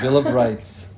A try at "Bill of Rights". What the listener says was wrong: Yeah, so the S needs to be pronounced. So rights. Bill of Rights.